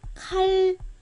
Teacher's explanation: 리을, 니은이 리을. 그냥 리을로 바뀌는 거예요. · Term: 유음화